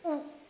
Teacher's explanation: ऊ बोलोगे तो आपकी जीभ थोड़ी पीछे जाएगी, ऊ ऐसा लगता है जैसे पीछे जा रही है, ऊ फिर ए में आगे जाएगी।